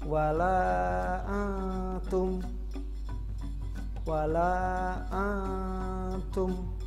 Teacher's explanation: Ada nun mati bertemu huruf ta, maka harus dibaca sedikit samar-samar ya, mendengung samar-samar seperti antum. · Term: ikhfa